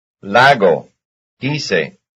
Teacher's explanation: Yes, they have the same stress. It's on the first syllable.